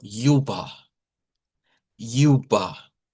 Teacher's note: si es alemán no rótico, entonces esto va a sonar como yuba. Yuba y la terminación R se hace con una vocal que está aquí.